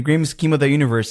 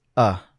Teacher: he doesn't say of he just says uh right so this happens very often as well yeah I think pretty much anytimes you have of not followed by a vowel.